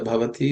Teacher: The bha in the bhavati is the only letter which is aspirated.